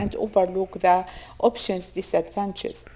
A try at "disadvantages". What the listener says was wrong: And the obvious disadvantages. So you didn't clearly pronounce those words. So be careful of the multi-syllabic words, 3 or more syllables. You want to make sure you're pronouncing all those syllables clearly.